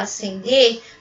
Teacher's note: você não ouve o som do SC, você ouve como se fosse um S só